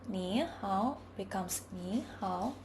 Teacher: In some cases, tones change in speaking. When a disyllabic word contains two third tones, the first one automatically becomes a second tone in speech.